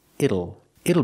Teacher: the T changes to a fast D